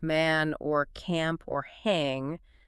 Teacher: especially in some American accents, that the a sound in words like man or camp or hang sounds a bit different, a bit tenser, raised. also >> the back or middle part of the front tongue actually tenses up and raises slightly. · the back or middle part of the front tongue actually tenses up and raises slightly. It moves away from that extreme low bull shape. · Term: raising or tensing